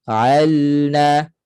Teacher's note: lam tawasud ni maknanya suara mengalir sedikit jadi lam kena mengalir sedikit suara alna Al baru bunyi na